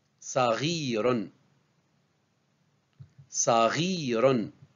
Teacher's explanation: On la prononce tel que le R du français, le R grasseillé.